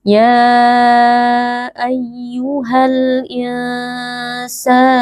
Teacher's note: Nun sukun dibaca dengan samar lalu didengungkan sedikit baru kita lanjut ke huruf sin. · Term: ikhfa haqiqi